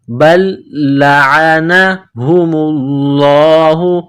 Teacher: با کو لام کے ساتھ ملانا ہے، لام میں سختی کرنی ہے، لام کو دبانا ہے